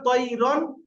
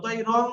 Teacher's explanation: জাহির করে বিনা গুন্নায় তাড়াতাড়ি পড়তে হবে